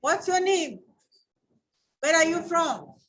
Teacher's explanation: when you're asking a question, the tone is rising. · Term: rising tone